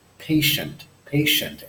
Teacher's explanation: it's not an S sound as it's indicated in slide it's like an SH sound